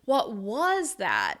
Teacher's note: You’re going to show that surprise by stressing the “was,” which wouldn’t normally be stressed in the sentence.